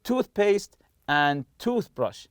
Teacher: toothpaste and toothbrush are compound nouns, and we stress the part of the tooth.